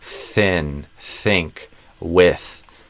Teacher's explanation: These are some words where you have the unvoiced TH, so it's just blowing air.